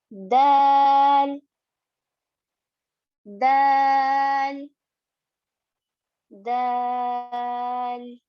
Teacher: दाल में सिर्फ आपकी टिप यानी कि आपकी नोक, जुबान की नोक ऊपर के दो दांतों की जड़ को लग रही है · जब जबान की नोक को यानी कि जबान की टिप को ऊपर के दो दांतों की जड़ से लगाया जाए तो दाल अदा होता है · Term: दाल का मखरज